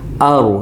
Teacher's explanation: Ra mati sebelumnya baris atas kena tebal